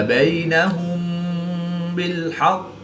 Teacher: میم ساکن کے بعد حرف با ہے تو یہاں پر اخفا شفوی ہوگا، یعنی غنہ زمانی کر کے پڑھیں گے